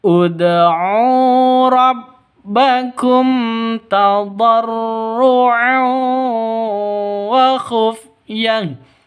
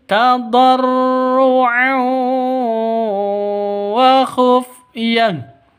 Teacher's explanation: tanwin bertemu dengan wawuh. Cara bacanya masuk ke wawuh disertai dengung dua ketukan. Kenapa? Karena idgham bighunah.